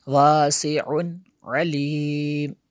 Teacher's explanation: میں شدد ہے یہاں پہ اس لیے غنہ کیا، واسع علیم، یہاں پہ غنہ نہیں کر سکتے کیونکہ تنوین کے بعد حروف حلقی میں سے عین ہے